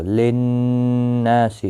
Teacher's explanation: نون مشدد پر گنہ ہوگا، نا الف مدہ بھی ہے، ایک الف کی مقدار کے برابر کھینچ کر پڑھیں گے